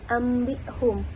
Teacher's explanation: menjadi ambum atau dalam ilmu tajwid kita tahu sebagai iqlab yaitu ketika nun mati bertemu dengan ba maka huruf nunnya itu berubah menjadi huruf Mim